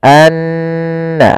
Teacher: Dan gunnahkanlah atau dan bacalah mim yang bertasydid atau nun bertasydid dengan bacaan gunnah. Maka cara membacanya tahan dulu n-nya, anna, baru dilepas